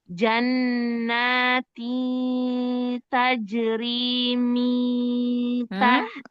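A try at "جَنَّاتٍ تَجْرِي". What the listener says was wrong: kayak huruf ya, jangan kayak huruf ya. Lisannya jangan nempel di makhraj huruf ya. Sudah di makhraj huruf ta aja sifat siap-siapnya. Jannatin tajri min tahtihal anhar.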